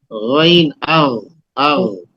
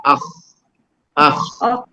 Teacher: یہ دونوں غین اور خا دونوں یہ ابتدائی حلق سے نکلتے ہیں